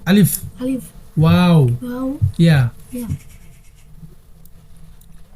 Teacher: মুখের খালি জায়গা হইতে মদের হরফ 3টি উচ্চারিত হয়।